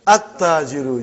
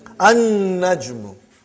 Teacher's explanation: You did not pronounce lam. Because noon is a shamsi. Sun letter.